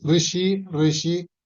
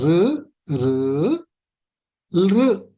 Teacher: దీన్ని కరెక్ట్ రు అని పలకాలి. రి అని రు అని పలకూడదు. ఋషి ఋషి ఆ రు అనే సౌండ్ రావాలన్నమాట.